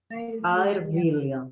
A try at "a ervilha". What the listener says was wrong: Isso.